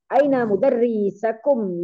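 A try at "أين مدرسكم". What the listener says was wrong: mudarrisu mudarrisu su gitu jangan sa su. su gitu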